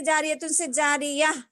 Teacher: گول تا یعنی چھوٹی تا پہ اگر وقف کرنا ہو یعنی رکنا ہو تو وہ ہائے ساکنہ بن جاتی ہے